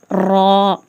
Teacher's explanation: ரா மேல ஜபரும் பேஷும் இருந்தா நல்லா தடிமனா ஊதணும்